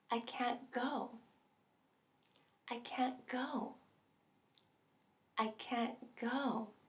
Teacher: with just can't and a verb we get a unique double stress pattern i can't go i can't go i can't go a punch